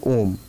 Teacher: प्लुत स्वर, जिस स्वर के उच्चारण में 3 मात्राओं का उच्चारण लगता है